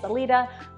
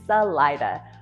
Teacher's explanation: So those with the Spanish-speaking background, of course, are going to want to say Salida, but yeah, it's Salida. Hard I, accent on the middle syllable